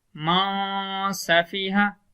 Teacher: ایک الف کی مقدار ہم آواز کو ناک کے اندر لے جائیں گے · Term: غنہ